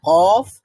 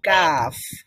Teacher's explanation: দেখেন আপনার জিহ্বার গোড়াটা কিন্তু উপরের মাড়ি উপরের তালুর সঙ্গে লাগলো কফ বলার সময় কিন্তু যখন আমরা কাফ বলবো তখন কিন্তু ওই জিহ্বার গোড়াটা উপরের তালুর সাথে লাগবে না এখানে জিহ্বার গোড়া থেকে কিছুটা সামনে আগাতে হবে কিছুটা সামনে আগিয়ে · বলবো তখন কিন্তু ওই জিহ্বার গোড়াটা উপরের তালুর সাথে লাগবে না এখানে জিহ্বার গোড়া থেকে কিছুটা সামনে আগাতে হবে কিছুটা সামনে আগিয়ে সেই অংশটা উপরের তালুর সাথে লাগবে তখন গিয়ে কাফ উচ্চারণ হবে